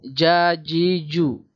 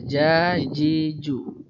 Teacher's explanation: Tengah-tengah lidah mengenai langit-langit rongga mulut. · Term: Jim